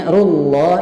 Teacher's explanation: rullah itu tebal karena huruf ra-nya berbaris dhammah